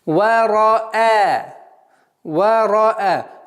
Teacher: Ра твердая, хамза мягкая у нас.